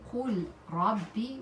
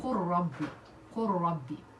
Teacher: The lam sakin wara, we have the lam, we are going to insert it in the ra, and we put shadda in ra. So this will be, instead of saying qul rabbi, we will say qur rabbi, qur rabbi. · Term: idgham bi ghayri ghunna